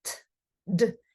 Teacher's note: T is voiceless and D is voiced.